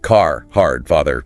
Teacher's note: a key one is rhoticity. Like Canadian, the R sound is nearly always pronounced.